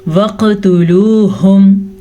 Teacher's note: تو سب سے پہلے کلکلا بھی کریں گے اور قاف کو پور یعنی کہ موٹا کر کے پڑھیں گے۔